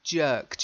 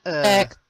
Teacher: not jacked, jerked. You've got to get that long.